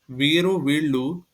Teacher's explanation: వీరు వీళ్ళు రెండు వాడుకలో ఉండగా ళ ర మధ్య శబ్దం యొక్క విభిన్నత పోవడం గమనించచ్చు